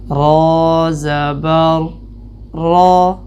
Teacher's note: را کے اوپر زبر ہوگی تو را کی آواز موٹی کریں گے